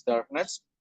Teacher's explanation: The stress stays on dark, making it stress specific suffix.